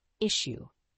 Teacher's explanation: the word issue has two syllables with the stress on the first syllable